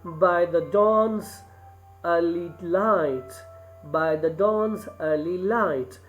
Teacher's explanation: the first two syllables are unstressed. By is unstressed, the is unstressed, and then the third one, dawn, is stressed. So this meter is basically of three syllables where you have by the dawn is stressed, the first two are unstressed. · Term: anapaest